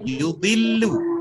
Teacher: Bibir dhammah tetapi lidahnya istifal.